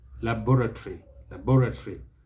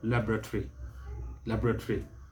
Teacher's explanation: that the british will stress the second syllable laboratory laboratory but the americans stress the first syllable